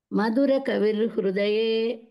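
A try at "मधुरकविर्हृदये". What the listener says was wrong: కవి హృదయ కాదు, కవిర్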